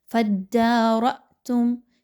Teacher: را کے اوپر چونکہ زبر ہے اس لیے اس را کو پر پڑھا جائے گا، باریک نہیں رکھنا۔